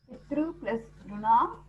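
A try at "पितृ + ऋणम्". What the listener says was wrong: Pitrunam. It is not Ru. It is R. Pitrunam.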